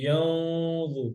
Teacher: গুন্নাটা মোটা, জ মোটা হরফ, গুন্না মোটা